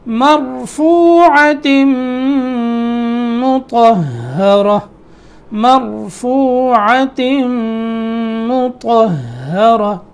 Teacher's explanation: مطہرہ میں طا موٹا ہے، اس کے بعد ہا، پھر گول تا پہ وقف تو اس کو ہم نے ہا پڑھا